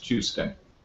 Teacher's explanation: I would regard as palatalized Tuesday.